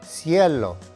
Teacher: Again, the emphasis is on the E